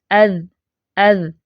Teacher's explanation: कैसी है जाल की आवाज में बुलंदी है देखें अ अज मजबूती के साथ सनाया उलिया के किनारों या सिरों को लगाए जुबान की नोक